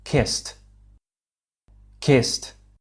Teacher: a D sound which is a voiced sound as well however as the final sound of the verb kiss is a s unvoiced this means our vocal chords don't vibrate